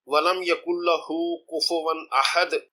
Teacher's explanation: مثلا اس آیت وَلَمْ يَكُنْ لَهُ كُفُوًا أَحَدٌ کی آیت کے بعد رکنے پر دال کی پیش والی تنوین دال کی جزم میں بدل جائے گی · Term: قلقلہ